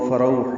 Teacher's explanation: فروح رو غولین ہے، یہ راپر ہے، ہونٹوں کو نا تمام گول کریں گے، آگے لائیں گے، ہا وسط حلق سے نکالیں گے، تنوین کے بعد واو آنے کی وجہ سے ادغام کریں گے، فروح پڑھیں گے، واو ہونٹوں کی نا تمام گولائی سے جلدی ادا کریں گے.